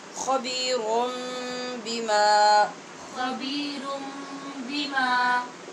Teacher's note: یہاں پہ یہ حرف اقلاب ہے، نون کو میم سے بدل کر غنّے سے پڑھیں گے. خبیرم، تو یہ یہاں پہ قاعدہ اقلاب کا پایا جائے گا.